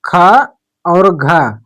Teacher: उच्चारण में सांस की मात्रा ज्यादा लगती है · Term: महाप्राण